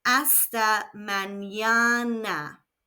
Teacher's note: Again, we have a silent H and the N has a virgulilla over it, which adds a Y sound after the N.